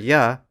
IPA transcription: j